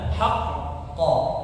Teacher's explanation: Karena huruf q di situ ada tasdid ya. Kemudian qalqalah pada huruf yang bertasydid maka dia ditekan kemudian ditahan ya.